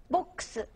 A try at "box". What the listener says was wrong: She's making a one-syllable word, two syllables.